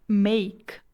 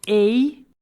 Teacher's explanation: Apesar de nós ouvirmos dois sons vogais da vogal e e da vogal i a junção desses dois sons é chamado de ditongo